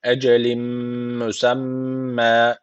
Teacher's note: idgamı meel gunne var. Guneli bir şekilde bağlıyoruz. · Şedeli mim var. Mutlaka bir elif tutmamız gerekiyor.